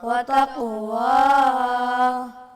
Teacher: قاف کو قلقلہ کریں گے، واو پہ ہونٹوں کو گول کریں گے